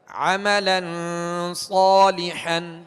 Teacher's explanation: ہم نے صاد کو تھوڑا سا کھینچا ہے ایک الف کی مقدار میں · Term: الف مدہ